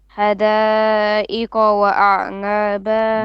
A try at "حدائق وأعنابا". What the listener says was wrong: No, you need to pronounce your qaf more clearly. And then ha, middle throat. حدائق وأعنابا. Your qaf needs to be more clear. qa. ha.